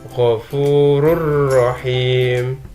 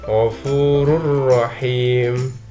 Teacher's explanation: Ini dibaca tanpa dengung karena ada dhammah tain bertemu dengan ro. Jadi huruf ro ini dileburkan ke dalam ro. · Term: idgham bila gunnah